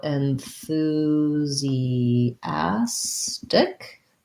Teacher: stress on the a syllable that's a clear a vowel like in black cat